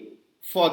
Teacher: इसमें होंठों से ही आवाज निकालते हैं, लेकिन होंठ सटाते नहीं हैं